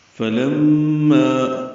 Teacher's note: فلما فا کو جلدی سے پڑھنا ہے، لام کو میم سے ملانا ہے، میم مشدد پہ غنہ ہے، آواز ناک کے ماسے میں لے جا کر 2 حرکات تک ٹھہرائیں گے اور ما الف مدہ ہے 2 حرکات لمبا کریں گے۔